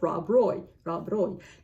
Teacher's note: I know that in Scotland, not everywhere, because there are multiple accents in Scotland, but many of the Scottish accents roll the R